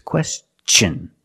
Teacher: use the hard CH sound because the tion is after an s